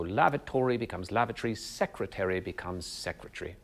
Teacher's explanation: quadrisyllabic words tend to become trisyllabic